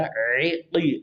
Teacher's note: من الصواعق، صو کو موٹا، واو زبر الف، الف مدہ، عقی، عین کو وسط حلق، قوف کو زبان کی جڑوں کے تعلق سے ٹکر کھائے